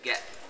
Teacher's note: In American English, the glottalization is accompanied by an alveolar gesture, meaning that your tongue actually does touch your palate as if it were to make a T, but it doesn't really produce the plosive. It doesn't really release anything.